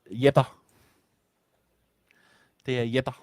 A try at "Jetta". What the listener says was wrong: There's a N that you're not pronouncing.